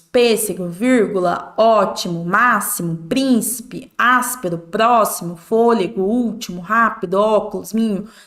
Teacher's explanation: são todas palavras proparoxítonas a sílaba tônica é a anti penúltima então podem reparar que todas estão acentuadas Então não temos exceções